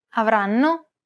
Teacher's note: The first N is held for roughly the same amount of time as all the other syllables